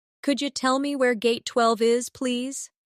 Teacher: In natural speech, could you sounds like could ya.